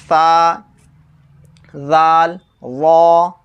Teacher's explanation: سرا زبان اوپر کے سامنے والے دانتوں کی جڑ سے، جو اوپر کے سامنے والے جو دانت ہیں اس کے جڑ سے تا، دال، طا ادا ہوتے ہیں، اور انہی دانتوں کا سرا یعنی اوپر کے سامنے والے دانتوں کا سرا اور سرا زبان مل کر سا، زال، وا ادا ہوتے ہیں